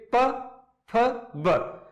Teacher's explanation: जब इनको हम उच्चारण करते हैं तो हमारे जो होठ है वो एक दूसरे से सट जाते हैं, यानी दब जाते हैं, इसलिए इन्हें दव्योष्ठे कहते हैं, जैसे प फ ब।